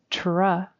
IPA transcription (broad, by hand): tɹ